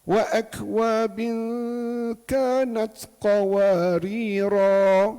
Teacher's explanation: dia baca ra dengan mad asli dua harakat. Hak qawarira keduanya pun dia baca dengan mad asli dua harakat.